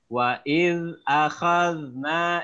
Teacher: Wa iz akhadna, ingat zal, lidahnya menjulur di antara dua gigi seolah-olah digigit.